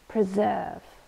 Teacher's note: Last word, preserve. This is a verb and two syllables. We stress the second one, preserve. And it means to keep something in its original condition or state.